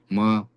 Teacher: म का उच्चारण कहाँ से होता है, म प वर्ग में है तो ओठ से होता है और नासिका से होता है, तो म का उच्चारण ओठ और नासिका से होता है